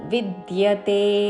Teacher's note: వి మీద ఆఘాత పక్కన ద కి య వత్తు